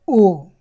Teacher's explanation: ओ और आओ का उच्चारण स्थान क्या है? कंठ और ओष्ठ। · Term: कंठोष्ठ